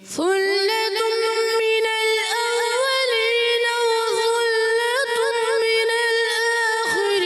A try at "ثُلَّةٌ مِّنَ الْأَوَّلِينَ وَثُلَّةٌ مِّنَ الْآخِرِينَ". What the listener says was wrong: اب پھر غلطی ہے. دو میں غلطی ہے. کیا دونوں میم مشدد جو ہے نا یعنی ادغام مال غنہ کا قاعدہ, ادغام کا قاعدہ ہے. تو ادغام میں ہم نے کیا کرنا ہے غنّے کرنے ہیں. کیسے ثلۃ من الاولین وثلۃ من الاخرین.